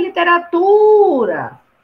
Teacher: Se eu for chamar a literatura, ei, literatura, eu vou segurar no tu. Né? Se eu for vender a palavra literatura, olha, literatura, eu vou sempre segurar na sílaba mais forte. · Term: sílaba tônica